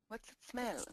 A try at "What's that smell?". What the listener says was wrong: One more time. Get that S stronger.